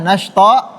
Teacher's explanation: Di sini huruf to panjangnya 2 harokat karena dia mad iwad.